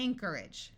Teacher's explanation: notice that the o r takes on a muffled R sound